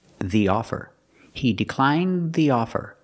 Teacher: Blends together with the th the offer he declined the offer the tongue goes up makes a stop D but it links together with the th so you don't really hear it